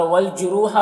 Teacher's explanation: और वल जुरूहा रॉ को पुर पढ़ेंगे, वाव मद्दा है, एक अलिफ के बराबर खींचेंगे